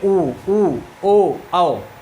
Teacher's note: ऐसा स्वर जिनके उच्चारण में हमारे ओठ क्या हो जाएंगे, गोलाकार हो जाएंगे, उन्हें हम लोग क्या कहेंगे, वृत्तमुखी कहेंगे।